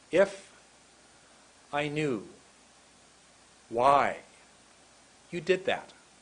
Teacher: the first word is very much shorter the second word is much longer